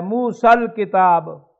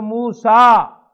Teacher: اور سکون سے پہلے، حرف ساکن سے پہلے الف تو حذف ہو جاتا ہے